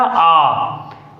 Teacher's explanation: इसमें द्वि गुना समय लगता है दीर्घ स्वर में और पलू स्वर में इसका तीन गुना समय लगता है तो